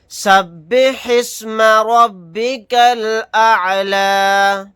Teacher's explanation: اور یہاں پر اگر ہم سانس نہیں توڑیں گے تو پھر لام کو لام میں ملا کر پڑھیں گے، یہ حمزہ سائلنٹ ہو جائے گا، نہیں پڑھا جائے گا